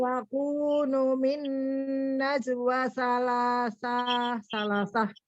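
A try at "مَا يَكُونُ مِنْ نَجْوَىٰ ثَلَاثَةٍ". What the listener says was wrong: Pendek. Salasahnya pendek. Salasah. Ma yakunu min najwa salasah.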